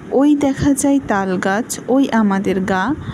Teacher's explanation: এখানে কিন্তু ওই এটি একটু স্ট্রেস বা একটু উচ্চস্বরে বলা হচ্ছে। দেখা এটা একটু আস্তে বলা হচ্ছে। যাই এটা একটু উচ্চস্বরে, এবং এভাবে কোনো শব্দ একটু উচ্চস্বরে এবং কোনো শব্দ একটু কম উচ্চস্বরে বলা হয়।